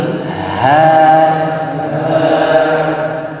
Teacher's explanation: I-nya tipis, h-nya tebal, ngebas suaranya.